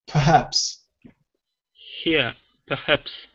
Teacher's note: the h sounds a bit sharp it's actually very subtle